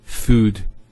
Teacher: So there's the elongation of the U sound, food, not food.